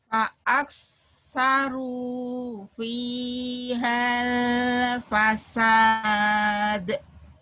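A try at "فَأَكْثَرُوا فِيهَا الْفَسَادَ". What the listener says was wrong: Fa'aksaru fi hal hanya jadi pendek ya karena ketemu sukun. Fi hal jadi pendek nggak panjang lagi.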